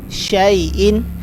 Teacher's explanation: یا لین ہے، لمبا نہیں ہوگا